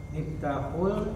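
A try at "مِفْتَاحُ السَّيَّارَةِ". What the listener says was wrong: Nah, sin ini samsiah atau qamariyah? Samsiah. Sahih, miftahus sayyarati. Yang pertama miftahul baiti, yang kedua miftahus sayyarati.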